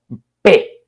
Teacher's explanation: Hay una obstrucción, los dos labios tapan la salida del aire y ahí tiene que haber una fuerza para reventar eso y que salga el aire. Es la oclusión.